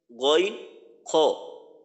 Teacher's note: তিন নাম্বার মাখরাজ কণ্ঠনালী বা হলোকে শেষ হইতে উচ্চারিত হয় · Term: হলকের শেষ